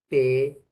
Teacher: La lengua, que es el órgano activo, con el diente, que es órgano pasivo. Y el lugar donde se juntan estos órganos articulatorios se denomina punto de articulación. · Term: consonante T